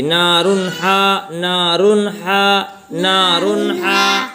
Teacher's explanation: اس کے بعد حروف حلقی میں سے ہا آ رہا ہے، جب حروف حلقی میں سے ہا آئے گا تنوین اور نون ساکن کے بعد، تو نون ساکن کو جلدی پڑھیں گے بغیر غنہ کے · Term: اظہار